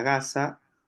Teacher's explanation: esa ga también es una oclusiva es una oclusiva velar